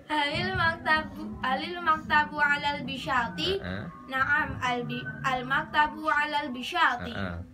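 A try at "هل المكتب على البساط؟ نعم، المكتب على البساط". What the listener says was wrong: Iya, betul.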